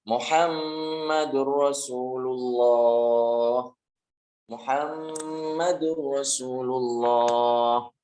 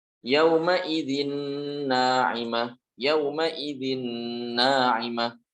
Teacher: Jadi nun sukun atau tanwinnya dileburkan dan tanpa dibaca gunnah. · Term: idgham bila gunnah